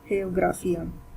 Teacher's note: when we are saying gra, we are not putting a lot of stress onto it